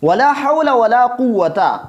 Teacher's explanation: حولہ میں جو ہا ہے اس کو ہم نرمی کے ساتھ ادا کریں گے حلق کے درمیانی حصہ سے